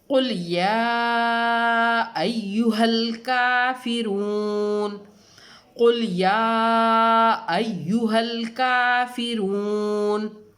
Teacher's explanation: کاف کے اوپر کھڑا زبر ہے، اس کو ایک الف کی مقدار میں لمبا کر کے پڑھیں گے، ٹھیک ہے۔ فا کے نیچے زیر ہے، واو پہ جزم ہے، واو سے پہلے رو پہ پیش ہے، یہ واو مدہ ہے، اور اس کو ایک الف کی مقدار میں کھینچ کر یعنی لمبا کر کے پڑھنا ہے۔